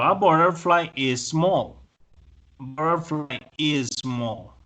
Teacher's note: En inglés resulta que cuando tenemos una consonante, un sonido de esta consonante, y luego sigue la misma consonante o el mismo sonido, yo solo pronuncio el sonido que está en la palabra que sigue. O sea que ahí voy a pronunciar solo una S.